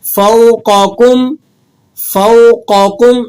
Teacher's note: ایک مثال ہے فوقکم، فوقکم، اس میں قوف کو آپ نے موٹا کر کے ادا کرنا ہے کیونکہ قوف یہاں موٹے حروفوں کا آ گیا